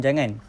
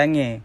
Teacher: perkataan ini akan digugurkan konsonan nasal nah dan berubah menjadi Jange dalam dele Klaten dalam deretan perkataan